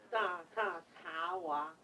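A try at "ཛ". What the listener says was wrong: 不 是 茶 ， 扎 扎 。 你 们 就 念 那 中 文 英 文 的 呢 ▁，exactly ▁那 个 ▁za， ▁对 吧 ▁？exactly ▁那 个 ▁za， ▁那 个 发 音 出 来 就 比 较 顺 za， ▁对 ▁za， ▁对 ▁za， za， ▁但 你 就 有 时 间 就 嘎 卡 卡 啊 ， 加 恰 恰 呢 ， 大 塔 塔 呢 。pa ▁pa ▁pa ▁ma ▁za ▁ca ▁za ▁wa ▁sha ▁sa ▁a ▁ya ▁la ▁la ▁sha ▁sa， ▁正 去 记 下 来 嘛 。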